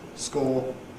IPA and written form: skɔː (score)